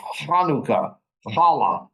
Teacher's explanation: You sort of swallow it. It's a more guttural sound.